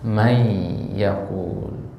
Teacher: Nun sukunnya enggak hilang sama sekali masih ada bacaannya masih ada rasanya dalam lisan kita · tapi bunyi Nun sukunnya masih ada kan ya masih ada ya Ini namanya Idam naqis meleburnya itu enggak sempurna ya Nun sukunnya enggak hilang sama sekali masih ada bacaannya masih ada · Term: idgam naqis